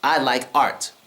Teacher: we don't use the T sound in American English with art